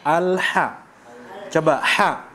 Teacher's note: kita berikan haknya yaitu di tengah tenggorokan